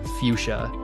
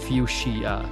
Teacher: It's pronounced 'FEW-sha', not 'FUCH-see-uh' as it may look.